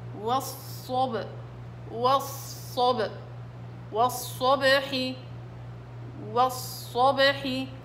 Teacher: الباء مقلقلة على وضع الساكن